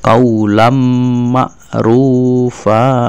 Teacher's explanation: Jadi kaulam ma'rufa itu tidak dibaca kaulan ya, tapi dibaca kaulam ya. Berarti suara tanwin masuk ke mim menjadi satu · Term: idhom